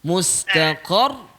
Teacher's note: Nak tekan. Sebab ada tasydid di ujung tu, ra tu.